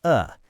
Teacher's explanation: it's okay for the word of to just sound like a tiny uh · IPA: /ə/